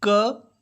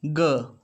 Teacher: K is voiceless and g is voiced